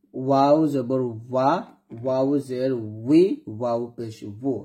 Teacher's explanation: দুই ঠোঁট পরস্পরের সাথে না ঠেকে থাকলে সেটাই ওয়ার এর সঠিক উচ্চারণ।